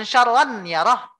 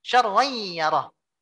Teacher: Bunyinya ini bias. Nggak jelas antara nun dan ya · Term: gunnah yang sempurna saja